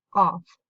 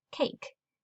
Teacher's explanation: Kaf for cake. Qaf, the heavy qaf coming from the throat.